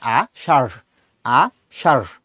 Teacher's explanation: হচ্ছে আশার আশার সো এখানে যখন তুমি উচ্চারণ করতে যাও তখন তোমার র এর সাথে হ টাকে একটু মিক্স করে উচ্চারণ করতে হয়